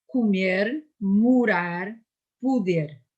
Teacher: In the non-stressed position, E is mute and O is U